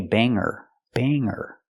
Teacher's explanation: we don't pronounce the hard G sound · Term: no hard G sound